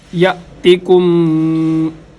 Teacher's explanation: تا باریک ہے، کاف بھی باریک